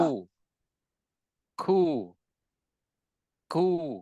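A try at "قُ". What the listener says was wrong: Alirkan lagi udaranya, hamasnya ku. Ku. udaranya lebih banyak mengalir ketika kaf. Ku.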